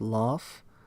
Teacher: Phones like the initial L of English, laugh, are called laterals because the sides of the tongue are lowered